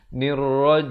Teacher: di akhir baru dirapatkan mulut bagi menyempurnakan huruf mim